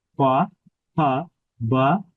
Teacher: এই বর্ণগুলো অষ্ঠতে উচ্চারিত হচ্ছে